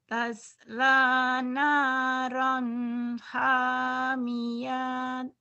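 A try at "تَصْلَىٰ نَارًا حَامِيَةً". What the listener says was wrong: Salah. Hamiatan. Nggak ada yang panjang. Taslanaron hamiatan.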